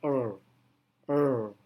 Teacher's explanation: sehingga mendekati native speaker jadi itulah R Voice alveolar approximent jadi saat kita mengucapkan R lidah kita terangkat sedikit hampir menyentuh atap mulut tetapi tidak sampai Menempel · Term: voice alveolar approximant